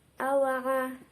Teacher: terdapat tafhim yang kuat yaitu ain berharokat fathah